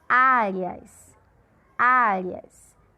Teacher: Nesse caso aqui, o áreas é uma sílaba paroxítona, porque nesse caso, áreas. A sílaba de maior força é o A, é a penúltima.